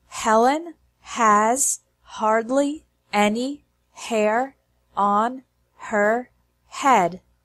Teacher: you might notice that when we say sentence number three fast the H sound in the word her disappears on her sounds like honor